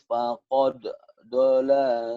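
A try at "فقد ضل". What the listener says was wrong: Faqad dhalla ada tasdid. faqad qalqalahnya mana? qalqalah.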